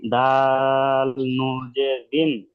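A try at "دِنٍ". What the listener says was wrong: নুন কেও টান দেন। দাল নুন জের দিন।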